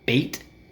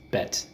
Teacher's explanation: Bait is very tense, bait, and bet is very relaxed.